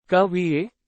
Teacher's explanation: The Voice Rises towards the end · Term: intonation